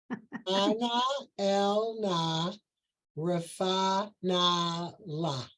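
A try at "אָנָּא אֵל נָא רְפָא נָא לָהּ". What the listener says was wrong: There you go. Perfect.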